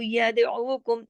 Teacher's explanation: پھر یدعو دال پہ کلکلا ہو گیا